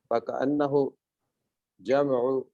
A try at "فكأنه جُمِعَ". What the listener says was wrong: یہ پیش ہے جمع